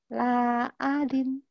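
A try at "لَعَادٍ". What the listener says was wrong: Ainnya panjang.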